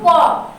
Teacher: ক উচ্চারণটা করার সময় শ্বাসবায়ু কণ্ঠে বাধাপ্রাপ্ত হয়